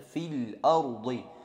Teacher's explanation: Jadi tidak dibaca panjang fi-nya itu, langsung masuk ke alif lamnya yang mati itu.